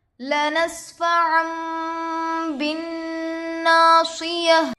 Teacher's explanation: نون ساکن کے بعد با آ کر ہے. نون کو میم سے بدل کر گنہ اور اکفا کے ساتھ پڑھیں گے. اس کو اقلاب کہتے ہیں.